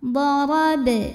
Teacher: Idza darab, huruf ra dibunyikan secara tafkhim karena barisnya di atas, maka bacanya tebal. Darab, huruf ba sukun dihukumi dengan qalqalah sughra karena huruf qalqalahnya ada di tengah ya, dan sukunnya asli, maka dibacanya dipantulkan dengan pantulan yang kecil